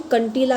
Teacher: जब हम कंटीला को बोलते हैं तो जो वायु होती है ना वो हमारे मुख से भी निकलती है और नाक से भी निकलती है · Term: अनुनासिक